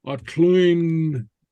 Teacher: we have a little hidden vowel in there